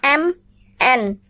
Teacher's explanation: terjadi akibat udara keluar melalui hidung ketika membunyikannya